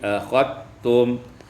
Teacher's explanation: idghamul zal fit ta, diidghamkan zal pada ta menjadi akhattum